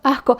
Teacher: cuando pronuncias una S justo antes de una consonante, en general la pronuncias lo que se dice aspirada